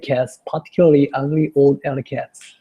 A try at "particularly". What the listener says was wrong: One thing I'd like you to be careful about is don't get too lazy on the R's on particularly. Okay, so it's particularly, or not really larly, it's lurly, particularly. Particularly.